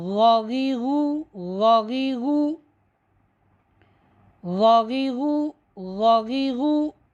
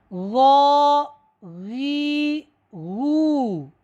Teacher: غین کا مخرج ابتدائی حلق ہے، یعنی گلے کا جو ابتدائی حصہ ہے وہاں سے حرف غین ادا ہوتا ہے، ٹھیک ہے۔ اور حرف غین جو ہے یہ حروف مستعلیہ میں سے ہے، یعنی ان حروف میں سے ہے جن کو ہمیشہ موٹا پڑھا جاتا ہے، اس کے اوپر زبر ہو، اس کے نیچے زیر ہو، اس کے اوپر پیش ہو، یہ حرف کیا ہے ہمیشہ موٹا پڑھا جاتا ہے۔